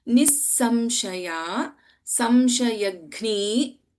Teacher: Nissamshaya, Samshayagni, Gha is Mahaprana,